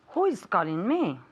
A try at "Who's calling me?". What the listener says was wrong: But here we want to contract the sound. So who is going to become one word.